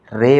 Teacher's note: امالہ کی را کو اردو کے لفظ قطرے کی را کی طرح پڑھیں، یعنی ری نہیں بلکہ رے پڑھیں